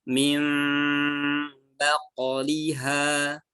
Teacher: bibirnya rapat tapi tidak ditekan, tapi suaranya masuknya ke hidung, digunakan ya, didengungkan. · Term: iqlab